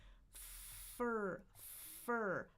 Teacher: My tongue isn't doing anything. It's my teeth and my bottom lips. My top teeth and bottom lips. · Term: F sound